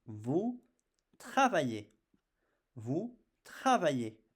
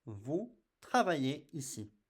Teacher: I don't pronounce the Z, I just pronounce the sound E.